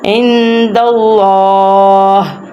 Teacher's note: کھڑی زبر کی وجہ سے لام کو ہم لمبا بھی کریں گے